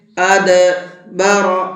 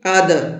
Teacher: دال حروف قلقلہ میں سے ہے اور اس کے اوپر جزم بھی ہے تو یہاں دال کے اندر قلقلہ کریں گے، ہلکا سا آواز کو ڈبل کر کے پڑھیں گے۔